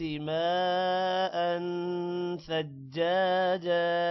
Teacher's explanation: ماء میم کے بعد الف ہے اور الف پر مد ہے لمبا کریں گے